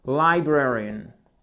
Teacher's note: Accentuation sur la deuxième syllabe.